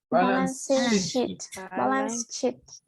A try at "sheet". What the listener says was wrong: Check on that one. Check on the last part. We say sheet. Make it longer, right? Make it longer. If you say it short, that is a bad expression. If you say it short, right? You say a bad expression. But you say sheet. Careful, right? Be careful.